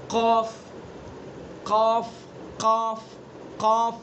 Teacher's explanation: قاف، زبان کی جڑ اور اس کے مقابل اوپر کا تالو. زبان کی جڑ جو پچھلا حصہ ہے جڑ، اس کو بالکل اس کے اوپر سیدھا اوپر اس کے مقابل میں لگا دیں گے اس کو.